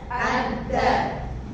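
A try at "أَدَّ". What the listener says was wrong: Jadi bukan adda, tidak putus ya, tetap nyambung suaranya. Adda. Itu untuk tasydid ya, yang perlu diperhatikan tadi ba, jim, dal itu ketika ditasydid tetap ada suaranya. Adda.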